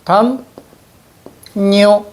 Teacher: 없던 니은이 생겼죠. 이런 걸 우린 뭐라고 이야기하냐면 니은 첨가